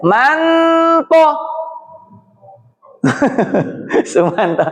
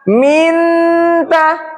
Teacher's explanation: Nun sukun ketemu to, huruf to. To kan hurufnya ujung lidah bertemu pangkal gigi seri atas. Sedangkan nun itu ujung lidah bertemu langit-langit. Langit-langit dengan pangkal gigi seri atas itu cuman dekat sekali. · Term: akrob